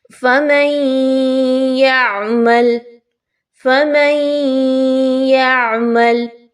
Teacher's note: نون ساکن کے بعد یا ہم نے ادغام کیا، اچھے سے غنہ کرتے ہوئے پڑھا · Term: ادغام مع الغنہ